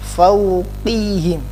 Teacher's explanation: Contohnya fauqihim, qi bukan qihim, tetap tebal ya, tidak boleh tipis. Kalau tipis jadi huruf kaf.